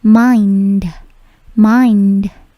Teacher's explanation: bunyi D-nya atau bunyi akhiran D-nya itu memantul sedikit